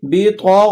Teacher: غین بھی موٹے حروفوں میں سے ہے تو اس کو بھی ذرا آپ نے بھرپور ادا کرنا ہے